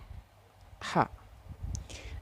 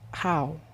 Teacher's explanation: This consonant sound is produced when the flow of air is stopped by the glottis, which some construction of the glottis closing, and then released, for example, ha, in the word how, and then who. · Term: Glottal sound